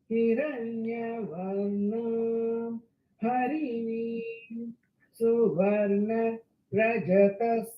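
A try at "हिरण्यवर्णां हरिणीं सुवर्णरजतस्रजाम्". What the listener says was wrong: Only ரஜதஸ்ரஜாம் தான் கரெக்டா வந்தது. மிச்சது எல்லா ஸ்வரமும் ஃபிளிப் ஆயிடுது. ஸோ ஹிரண்ய.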